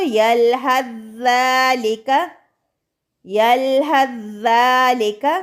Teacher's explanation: سا ساکن کو ذال کے اندر مدغم کرتے ہوئے ہا کو ڈائریکٹ ذال سے ملاتے ہوئے ہا زبر ذال ساکن حظ ذال کھڑی زبر ذا، حظ ذا، یلحظ ذالک یعنی ہا کو ڈائریکٹ ذال سے ملا کر پڑھنا ہے.